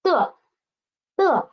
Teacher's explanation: The initial D and the final. And the tone is neutral tone. So we need to read it soft and quick.